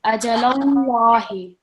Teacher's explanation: We are joining the lam directly with the lam in the word Allah.